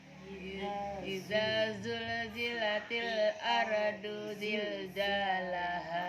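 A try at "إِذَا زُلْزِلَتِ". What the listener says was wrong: Ulang, belum tandes. Idanya udah bener. Zainya yang kedua. Idanya udah bener. Idza zul. Ikut lihat sini, lihat bibir Umah. Zi. Zu. Baz. Zu. Beda ya. Idza zul.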